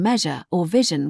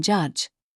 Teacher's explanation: Don't replace the soft vibrating sound in measure or vision with the heavier sound in judge. Keep the air flowing smoothly.